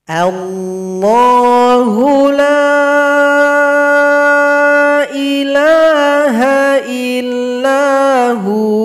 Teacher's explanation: Kalau berwaqaf di sini, wawnya disukunkan, maka hanya yang dhamma ini menjadi mad tabi'i karena dhamma jumpa waw sukun, panjang 2 ketukan